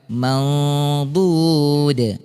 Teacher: Karena huruf dot ini tebal, jadi bunyi nunnya juga dengungnya juga kita tebalkan.